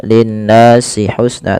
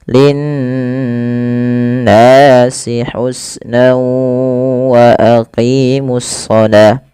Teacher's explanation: Lafal nun berharakat tasydid itu wajib ditahan suara n ya. Nah, ini yang kita namakan dengan gunnah.